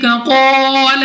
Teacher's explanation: قاف مستعلی میں سے موٹا پڑھیں گے، الف سے پہلے زبر الف مدہ 2 سیکنڈ تک کھینچ کر لمبا کر کے پڑھنا ہے۔